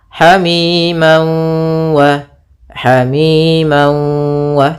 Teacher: masukkan tanwinnya ke waw sambil ditahan gunnahnya 2 harakat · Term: idgham bi gunnah